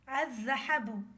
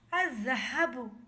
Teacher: یہاں پر دیکھا جا سکتا ہے کہ لام لکھا ہے مگر پڑھنے میں نہیں آ رہا۔ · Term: حروف شمسیہ